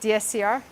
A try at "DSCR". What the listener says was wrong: Yeah, you said DCSR. DSCR.